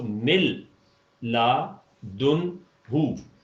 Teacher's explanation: نون کا وجود ادغام کامل کی وجہ سے ختم ہو جائے گا